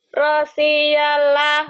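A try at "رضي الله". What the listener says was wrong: Rodia, bukan Rosia. Ada titiknya. Rodia. Rosia nggak ada titiknya. Rodia.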